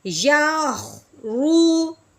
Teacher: یوخ یا موٹا نہیں کرنا، ٹھیک ہے، یا کو باریک کرنا ہے، خو کو پر کرنا ہے